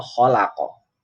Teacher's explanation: Khalaq, kalau dibaca wasol kholako. Kalau dibaca wasol ini ada tambahan kholako, ada o-nya. Tapi kalau dibaca wakof berhenti kholaq, maka ini terjadi yang dinamakan qalqalah kubro.